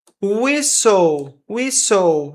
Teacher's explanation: Não tem esse T aqui.